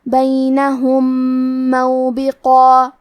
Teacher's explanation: یہاں حکم ہے ادغام متماثلین صغیر اور ادغام کا معنی ہے حرف کو حرف میں داخل کرنا. تو ہم پہلے میم کو دوسرے میم میں ملا کے ایک ہی میم غنہ اور تشدید کے ساتھ پڑھیں گے